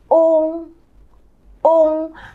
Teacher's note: Nó không có thiên về âm o đâu ạ Nó vẫn là âm u Chỉ có điều môi mình không chụm lại thôi nào chúng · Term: vận mẫu ôm